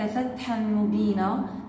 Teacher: عندنا نون بعد منها حرف الميم، إدغام تام وبغنة